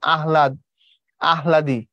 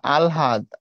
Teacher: হ টা আনি পরে ল টা আনি ঠিক না প্রচেষ্টা ভুল পড়ার সময় আগে ল টা যাবে তারপরে হটা যাবে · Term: আগে ল তারপরে হ